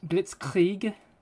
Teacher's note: when you pronounce the r in German you kind of have to go in the back of your throat like um Blitzkrieg you gotta kind of like put like let's